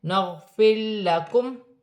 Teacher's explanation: غین حرف حلقی میں سے ہے، ساکن ہے، را ساکن سے پہلے زیر ہے، را باریک پڑھی جائے گی